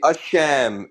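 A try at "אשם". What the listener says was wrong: You keep pronouncing it like there's an H in front of it, and there's not. We had the same conversation last time we talked.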